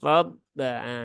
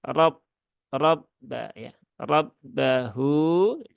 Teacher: ba-nya dia punya sifat syiddah, maka jangan dialirkan untuk ba yang bertasydid.